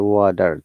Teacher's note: sounds like d because that is in between two vowel sounds